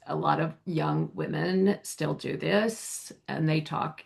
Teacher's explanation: a lot of young women still do this and they talk, this is called glottal fry